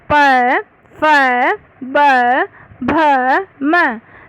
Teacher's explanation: ये ओष्ठय्य कहलाते हैं। इन वर्णों का उच्चारण करते समय दोनों ओष्ठ आपस में मिलते हैं, अतः इनका उच्चारण स्थान दोनों ओष्ठ है।